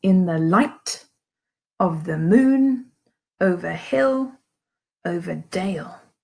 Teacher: you've got 2 quiet, unstressed syllables and then 1 stressed syllable. Okay, so if you think of it as 2 ballet shoes and then 1 big boot. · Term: anapest